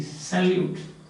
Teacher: the first syllable is unstressed, second is stressed.